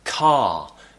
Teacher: a word like car we don't pronounce the r at the end